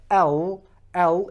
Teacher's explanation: your tongue is rising up it's going towards the top the back of the front two teeth it's not going to the tip of the gums it's going